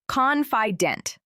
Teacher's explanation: the word confident, the stress is on the first part